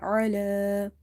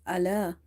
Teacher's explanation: Ain is from the halki letters and it's pronounced from the middle of the throat.